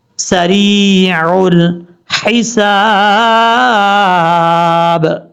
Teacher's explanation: یا مدہ ہے، ایک الف کی مقدار اس کو لمبا کر کے پڑھیں گے، عین کو اپنے مخرج سے ادا کرنا ہے، حمزہ کی آواز نہیں آنی چاہیے۔